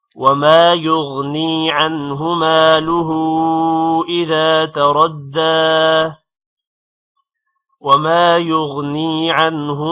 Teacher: ہا پہ الٹا پیش بھی ہے اور مد بھی ہے، ہا کو تھوڑا لمبا کریں گے